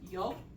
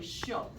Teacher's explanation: the Y or the double L makes a sh sound